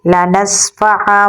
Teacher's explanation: نون کی آواز کو میم میں تبدیل کر دیں گے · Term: اقلاب